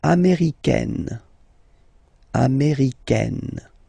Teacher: it's really open this A-I